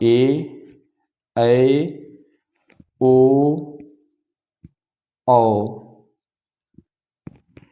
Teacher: दीर्घ स्वर में क्या होता है हास्य स्वर की अपेक्षा दो गुना समय